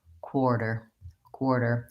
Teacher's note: there's no quality to my T in quarter in American English I use a flap T which I mark in the symbol as a little line under the T and it really actually sounds more like a D · there's no release of the T there's no aspiration there's no quality to my T in quarter in American English I use a flap T which I mark